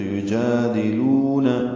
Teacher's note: ان الذین یجادلون، یا کو جلدی سے معروف طریقے سے ادا کریں گے، جیم کو 2 حرکات لمبا کریں گے، کھڑا زبر ہے، دال کو معروف طریقے سے پڑھیں گے، لو واو مدہ ہے، 2 حرکات لمبا کریں گے